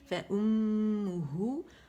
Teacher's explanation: ہم اس پہ حرف غنہ مشدد ہے تو غنہ کریں گے. فَأُمُّهُ ہے، اس کو پہلے ہے کے مخرج پہ جائیں گے، اقص الحلق پہ، اس کو پیش دیں گے.